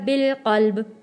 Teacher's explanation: جب جزم آ جائے گا تو ہم یہ پڑھا جائے گا بالقلب، کیونکہ آگے حروف قلقلہ آ جاتا ہے اس لیے آواز واپس پلٹ کر آئے گی